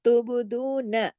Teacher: دو کو 2 حرکات کھینچیں گے، واؤ مدہ ہے، لیکن نون کو نہیں کھینچنا کیونکہ نون کے اوپر صرف ایک حرکت ہے جو کہ زبر ہے.